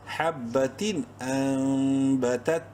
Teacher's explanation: نون ساکن کے بعد با ہے، تو ایسے میں چھوٹی سی ایک میم لائی جاتی ہے، میم منقلب جسے کہتے ہیں. غنہ ہوگا یہاں پر بھی.